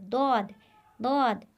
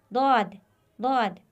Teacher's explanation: इसका मखरज है हर्फ दाद की दुरुस्त अदायगी के लिए ज़बान के बाएं या दोनों किनारे को ऊपर की दाढ़ों के मसूड़ों के साथ हल्का सा मिलाए और आवाज़ को इस तरह से खारिज करे कि वो मखसूस दौद की आवाज़ बने। ये देखिए ज़बान का किनारा दायां या बायां किनारा जब ऊपर वाली दाढ़ों के मसूड़ों से लगे तो ये हर्फ अदा होगा, दौद, दौद। यहाँ से इन दाढ़ों के मसूड़ों से लगाए, दौद, दौद।